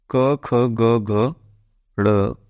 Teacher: कंठ व्यंजन यानी कि जिनका उच्चारण कंठ से होता है गले से होता है